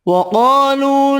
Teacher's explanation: قاف حروف مستعلیہ پر پڑھیں گے، الف مدہ واو مدہ ایک ایک الف کی مقدار میں کھینچ کر پڑھیں گے۔